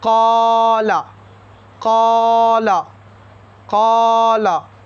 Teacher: So we will stretch qaf and we will not stretch la.